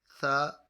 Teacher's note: ثا زبان کا سرا اوپر کے دانتوں کے اندرونی کنارے سے ادا ہوتا ہے، اس کو حرف لثویہ کہتے ہیں۔